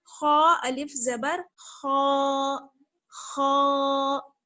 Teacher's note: खा जो है वो हुरूफ मुस्तालिया में से है, मोटा पड़ा जाता है